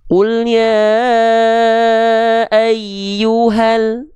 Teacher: Mad thobiinya gagal aktif enggak perlu dibaca Dua harakat cukup dibaca satu harakat saja